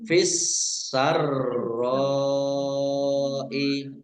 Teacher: Fis-sarra'i alif lam samsiyah karena tidak dibaca langsung masuk ke huruf berikutnya yaitu sin, ditandai sinnya ada tasdidnya. Sinnya dibaca double. Kemudian roknya juga dibaca double. Fis-sarra'i rok fathah alif mat tabi'i tetapi karena bertemu dengan huruf hamzah dalam satu kata maka menjadi mat wajib mutasil, harus dibaca panjang 5 harokat.